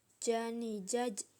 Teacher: ketika mati suaranya mantul